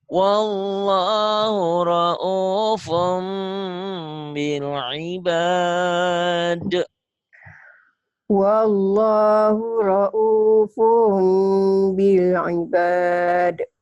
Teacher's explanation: bunyi N-nya, bunyi nun matinya berubah menjadi M atau mim mati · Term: iklab